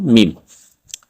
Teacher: মিম হরফটি ঠোঁটের শুকনা জায়গা থেকে উচ্চারিত হবে